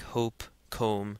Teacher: the short o remember had a shorter sound to it like hope comb it didn't endure as long when you say it